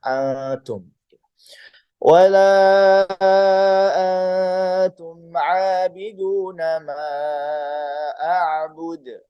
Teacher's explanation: ikhfa-nya membacanya setengah, seperti mau bilang ang, tapi diambil di pertengahan, kemudian dilanjutkan dengan huruf selanjutnya. Seperti kita mau bilang angtum, tapi angnya hanya diambil setengah, atum.